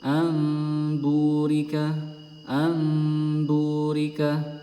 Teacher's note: Jadi nun sukunnya ini diganti menjadi mim.